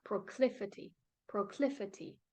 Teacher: the second syllable is the one that you stress the most